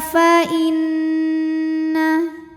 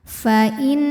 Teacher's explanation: Karena nunnya ada tasydidnya, maka dibunyikan dengan mendengung ya. Bunyi n-nya tahan. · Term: gunnah musyaddadah